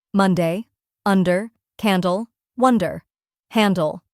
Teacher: make sure that the D sound is clear but not too heavy. It should be a light and crisp sound, almost like a soft tap.